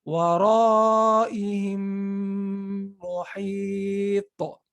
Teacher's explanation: I emphasize the meme as if there's a shadda, and I extended my nasal sound.